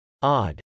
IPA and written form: ˈɑd (odd)